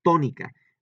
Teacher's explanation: Le estoy dando mayor énfasis o más fuerte aquí en la sílaba to, y entonces por eso lleva un acento. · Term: sílaba tónica